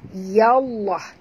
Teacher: Lam di tengah-tengah, lam pada lafaz jalalah dibaca tebal kerana ya berbaris di atas